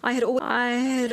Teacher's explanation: you can't really hear the a in had